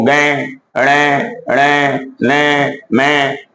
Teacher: प्रत्येक वर्ग का पांचवा जो वर्ण है नाक से बोला जाता है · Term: अनुनासिक